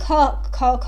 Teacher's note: ज्यादा हवा निकालता है ऐसे ऐसे हाथ रख के देखिए ख ज्यादा हवा निकलेगा मुंह से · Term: महाप्राण